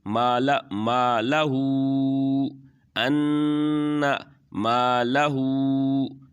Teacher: ان مالہ، یہاں پر ان کو تھوڑا سا کھینچ کے اور پھر مالہو کی جو ہا ہے اس کے اوپر الٹی پیش بھی ہے اور چھوٹی مد بھی ہے، تو اس کو تھوڑا سا کھینچیں گے